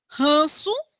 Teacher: O N, às vezes, vai ser um dígrafo junto com uma vogal, ele vai ter somente um som para nasalizar a vogal.